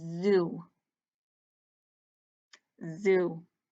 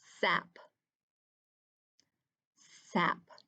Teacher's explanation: does your face get all buzzy when you say the z sound yeah there's kind of a vibration in there